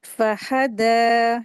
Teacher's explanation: आयत, इसमें देखें वर्ड जो है फहदा, तो फहदा में फा और हा, इसको जल्दी पढ़ेंगे, जबर लगी। दाल को दो हरकत खींच के पढ़ेंगे